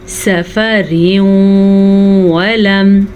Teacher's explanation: ہم دونوں الفاظ کو آپس میں غنّے کے ساتھ ملا کے پڑھتے ہیں۔ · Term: ادغام بالغنہ